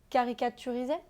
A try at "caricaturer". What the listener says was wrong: T'as juste rallongé le mot. On t'a dit de faire simple. Ne rajoute pas de syllabes